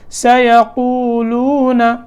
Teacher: پیش ہے، اس کے بعد واو ساکن ہے، اور لام اس کے اوپر بھی پیش ہے، اس کے بعد واو ساکن ہے. تو یہ دونوں واو یہاں حروف مدہ ہیں. اب ان دونوں کو تھوڑا لمبا کریں گے.